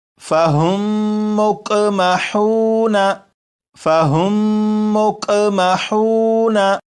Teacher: मीम साकिन के बाद दूसरी मीम हो तो इस मीम को इस मीम में शामिल कर देंगे, इदगाम कर देंगे और गुन्ना करके पढ़ेंगे